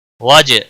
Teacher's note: جیم پر قلقلہ ہوگا